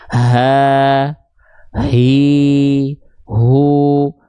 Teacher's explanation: kalau H kecil dilafalkan terlalu ke bawah jadinya H besar karakter nafasnya biasa